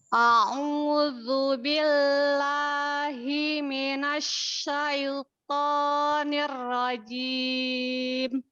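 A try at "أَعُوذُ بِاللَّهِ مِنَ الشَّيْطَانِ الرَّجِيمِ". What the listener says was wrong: Takrironya tidak nirrojim, ya. Ya, didatarkan a'udzu billahi minasyaitonir rajim. Nah, ya, berlatih menghilangkan takrir yang berlebihan di huruf ro ya.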